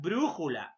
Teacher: la mayor fuerza de voz ante penúltima sílaba · Siguiente, las esdrújulas son también conocidas como proparoxítonas. La mayor fuerza de voz, profe, ¿dónde está? En la antepenúltima sílaba. Como el caso de la palabra brújula.